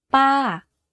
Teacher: focus on pitching your voice to go slightly up first and then to fall down at the end of the syllable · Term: falling tone